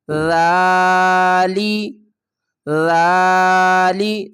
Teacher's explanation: ذال کھڑا زبر ذا، لام زیر لی، ذالی، ذالی، ذال کو ہم تھوڑا سا نرمی کے ساتھ اور تھوڑی سی زبان کو باہر نکال کر پڑھیں گے